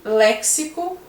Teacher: e léxico, que o X tem som de CS